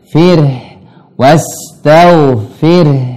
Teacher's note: Ro-nya ini sifatnya tawassut. Jadi harus mengalir.